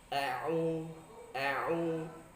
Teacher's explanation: Sehingga kalau kita tutup hidung a'u, tidak ada suara masuk ke hidung